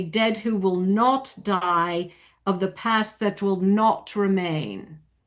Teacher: a little bit more rounding on the word not. So we say, dead who will not die, of the past that will not remain.